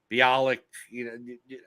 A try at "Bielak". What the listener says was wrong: You keep saying Bialik. I think you're saying like Mayim Bialik. It's Bielak.